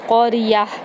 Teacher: قاف اور را دونوں پر پڑھے جائیں گے